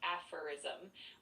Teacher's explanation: with the first part sounding like a and the emphasis on that first syllable